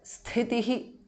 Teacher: the first thi is mahapranah